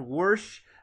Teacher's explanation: For some reason in Appalachia, they add an R to wash, to make it sound worse.